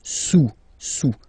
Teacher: Don't pronounce the final S, and then this OU combination of vowels is pronounced OU